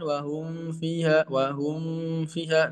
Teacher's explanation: Karena makhraj mim menyatu dengan makhraj waw dan mendekati huruf fa. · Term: izhar